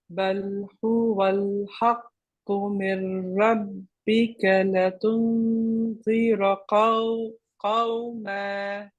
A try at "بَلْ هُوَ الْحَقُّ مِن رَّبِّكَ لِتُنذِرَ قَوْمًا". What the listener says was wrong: It's the lam in litunzir has a kasra, not a fatha. I think you pronounce it with a fatha, so just be careful of that.